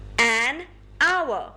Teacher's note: h at the beginning however we do not pronounce the age the beginning sound is ow which is a vowel sound